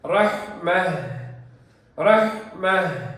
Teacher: இந்த தாவை நிறுத்தும் பொழுது இந்த தா ஹாவாக ஆகிவிடும். ஹா சுக்குன் மாதிரி நிறுத்த வேண்டும் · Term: ஹாஉ தனீஸ்